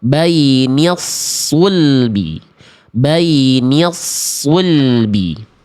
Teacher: ketika dhommahnya disempurnakan harus monyong untuk menyempurnakan vokal u-nya